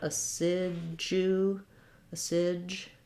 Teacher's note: this du is rather than being a d sound and a u sound, is more of a j sound